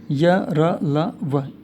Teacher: इनको अंतस्थ इसलिए कहा जाता है क्योंकि इनके उच्चारण में वायु भीतर ही गति करती है और बहुत कम स्पर्श होता है मुख के आंतरिक अंगों का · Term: अंतस्थ व्यंजन